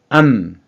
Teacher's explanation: 암 발음을 하면 입술이 가운데로 모이죠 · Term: 미음